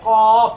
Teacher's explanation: اس کا مخرج زبان کی جڑ تعلق کے نرم حصے سے